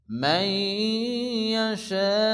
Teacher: হামজাটা একেবারে উচ্চারণ হবে না, ইয়াশা বলে থামতে হবে।